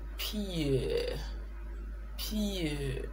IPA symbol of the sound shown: pɪə